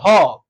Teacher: उसके बाद आता है दंत स यानी कि नामे से प्रतीत हो रहा है कि यहां पर दंत होगा और ह जो बच जाता है मेरे प्यारे साथ जब बोलते हैं ह क्या बोलते हैं ह बोलते हैं तो आवाज आता है कंठ से इसलिए इसका उच्चारण स्थान हो जाएगा यहां पर कंठ